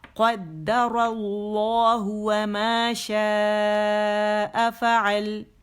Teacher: قد قاب موٹا دال باریک، قد اللہ، اس میں جلالہ بھی موٹا ہے، را بھی موٹا ہے